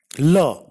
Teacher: La is a voiced alveolar lateral. · A lateral consonant is articulated with a stricture of partial closure. That is, there is complete closure in the center of the vocal tract, but the air escapes along the sides of the tongue without any friction. There is only one lateral sound in English.